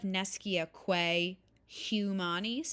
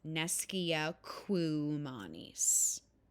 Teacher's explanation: the quae and the humanis would elide together because of the E followed by an H, and the A out of the quae would disappear. So now instead of nescia quae humanis, it becomes nescia quumanis. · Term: vowel plus H